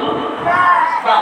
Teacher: এই দুই ঠোঁটের বীজ অংশ থেকে একেবারে চাপ না দিয়ে, ঠিক আছে, দুই ঠোঁটের বীজ অংশ থেকে স্বাভাবিকভাবে বা উচ্চারিত হবে